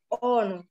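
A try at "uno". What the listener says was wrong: لا استنى استنى مش اونو لانك كده خليتها في الاول او وهي مش او هي او تبقى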